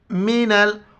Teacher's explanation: اور نون کو لام کے ساتھ ملائیں گے